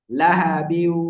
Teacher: ইদগাম। ইদগামে বা গুন্নার অক্ষর ওয়াও আসছে, গুন্নার সাথে মিলিয়ে লাহাবিউ।